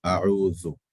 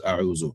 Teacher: The tip of the tongue touches the incisors for Dhal.